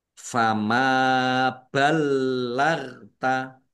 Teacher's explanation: Mim fathah alif mat tobi'i panjang 2 harokat.